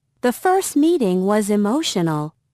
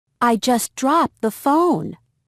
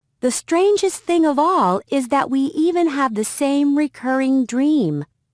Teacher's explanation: when a word with a final T is followed by a word that begins with another consonant sound, the T is often left out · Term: consonant sounds are left out